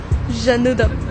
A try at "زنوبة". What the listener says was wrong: مو جنوبة، زنوبة.